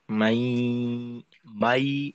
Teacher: আমরা ইয়ার মাখরাজে থাকবো, আওয়াজটাকে একটু দীর্ঘ করতে হবে। আর আওয়াজের কিছু অংশ নাকে যাবে আর কি। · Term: ঈদগামে বাগুন্না